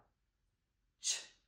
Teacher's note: there's a quick burst and it makes the ch sound and it's unvoiced